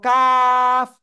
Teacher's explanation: চিকুন আওয়াজে চার আলিফটা নিয়ে উচ্চারণ করতে হবে